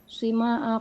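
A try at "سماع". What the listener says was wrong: Bukan sima. Ini kemarin kita sudah tegur ya. Tidak ada kata sima, tidak ada itu. Yang benar apa? Sama. Tidak ada sima ya. Ini kesalahan kaprah di Indonesia banyak. Bilangnya sima, tidak ada. Di kamus manapun tidak disebut sima, dibacanya sama.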